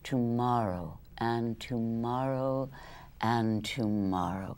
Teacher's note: that ah sound gets really long